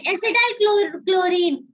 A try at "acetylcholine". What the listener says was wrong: Chlorine नहीं है, choline. Acetylcholine.